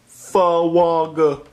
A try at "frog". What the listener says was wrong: No, not, there's no W. It's frog.